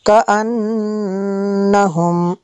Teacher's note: معرضین عن التذکرۃ معرضین کأنہم، یہاں پہ نون مشدد ہے، یہاں پہ اس لیے غنہ بھی کریں گے